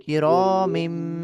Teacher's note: তানবিনটা কিন্তু থাকছে না। এটা মিমের দ্বারা পরিবর্তন হয়ে যাচ্ছে। মিম মিম জের মিম হয়ে যাবে।